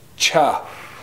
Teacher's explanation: This word ends with an X raised W. Again, just a blowing sound with your lips rounded.